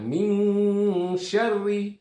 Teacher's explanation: di situ nun mati bertemu dengan shin yang harus dibaca samar, ya, atau harus dibaca ikhfa.